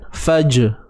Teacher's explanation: huruf jim yang mati ni dia ada sifat lantun juga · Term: Qalqalah